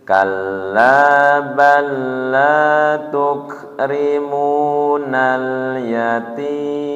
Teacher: Kalla tasdid kemudian laknya panjang.